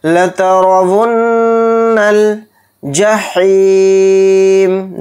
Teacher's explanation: نون کے اوپر تشدید ہے تو نون میں غنہ کر کے پڑھیں گے اور را کو یہاں پر موٹا پڑھیں گے را پر زبر ہونے کی وجہ سے۔